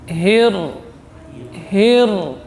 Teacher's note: Ra huruf takrir. Di sini getarannya disembunyikan karena bertasydid.